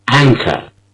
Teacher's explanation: The first syllable which is stressed is an it's rather long